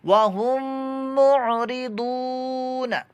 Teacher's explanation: ضاد کی آواز پر موٹی بھی ہونی چاہیے کیونکہ یہ حروف مستعلیہ میں سے ہے، حروف مستعلیہ پر موٹے پڑے جاتے ہیں ہمیشہ پر موٹے، اور نون کے اوپر حرکت ہے، اس کو لمبا نہیں کرنا، وَهُم مُعْرِضُونَ۔